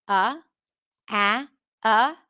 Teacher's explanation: Not a neutral, but it's like a stressed schwa.